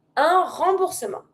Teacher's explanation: And you don't pronounce the T.